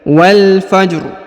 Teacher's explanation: walfajr walfajr Jadi rnya disukunkan tapi dengan suara tipis walaj ya Jadi ada suara ro tapi direndahkan ya atau ditipiskan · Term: suara rendah